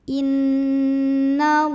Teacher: Lam pada lafaz Allah dibaca secara tafkhim sebab huruf sebelumnya nun barisnya fathah. Maka bacanya ditebalkan, pangkal lidah dinaikkan.